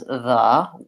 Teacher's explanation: we pronounce this word as the with vowel schwa. And that's because it's unstressed, and so it has that reduced, unclear vowel.